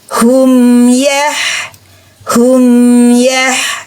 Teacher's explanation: Apakah ada dengung ada ada gunnah ada dengung lewat di kisum suara izhar di huruf mim hanya lewat di kisum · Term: izhar syafawi